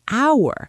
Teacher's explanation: The H is completely silent. You never hear it.